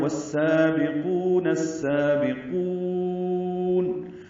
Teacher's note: ہم نے وقفاً آخر میں قاف کو لمبا کیا ہے. قاف پر ہے، واو مدہ ہے، اس کے بعد نون ساکن کر رہے ہیں وقفاً، تو یہ مد عارض للسکون بنی ہے، مد وقفی بنی ہے. · واو ہونٹوں کی نا تمام گلائی سے ادا کرتے ہوئے سین سے ملائیں گے. یہاں الف لام نہیں پڑھا جا رہا اس لیے کہ ادغام شمسی ہو رہا ہے.